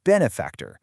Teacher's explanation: Getting it right, putting the stress on that first syllable, is absolutely key to sounding natural and just being understood.